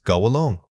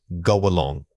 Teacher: This link is very common and involves letting a slight glide of air connect the two words.